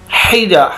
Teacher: ہا حلق کے درمیان سے